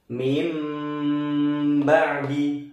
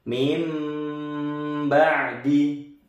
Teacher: Contohnya adalah mim ba'di, tidak min ba'di tapi dengung lama sambil mingkem, enggak boleh putus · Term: iklab